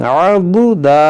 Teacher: दाद को मोटा करेंगे, दाल को बारीक